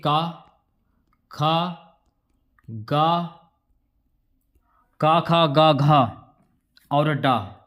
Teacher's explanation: ये कंठ से बोले जाने वाले वर्ण है